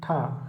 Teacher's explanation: इनके उच्चारण में मुख से अधिक वायु निकलती है तथा हकार की ध्वनि सुनाई देती है। प्रत्येक वर्ग का दूसरा और चौथा वर्ण, और इसके साथ साथ ऊष्म व्यंजन महाप्राण के अंतर्गत आते हैं।